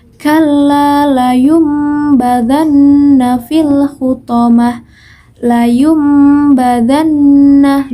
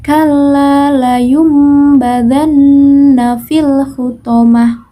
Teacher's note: Iklab secara bahasa artinya merubah, sedangkan menurut istilah yaitu pengucapan nun mati atau tanwin apabila bertemu dengan huruf ba, maka suaranya berubah menjadi mim. Huruf iklab ini hanya ada satu, yaitu huruf ba.